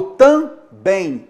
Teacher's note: Nesse caso aí, você vai notar, não há o som m. Então o M aqui não é consoante. Ele é chamado então de letra diacrítica. Só está aqui para nasalizar a vogal anterior.